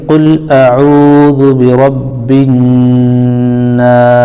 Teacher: اب یہاں پر نون الف زبر نا ہے، الف سے پہلے نون کے اوپر زبر ہونے کی وجہ سے الف مدہ ہو جائے گا، اس کو بھی ایک الف کھینچیں گے، لیکن چونکہ سین پر ہم وقف کریں گے تو وقف کرنے کی وجہ سے یہ مد عارض ہو جاتا ہے، مد عارض کو ایک الف، 2 الف، 3 الف بھی کھینچ سکتے ہیں